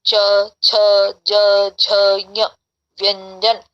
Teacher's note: अंतिम का भी तालु से होगा, पर ध्वनि आएगी नासिका से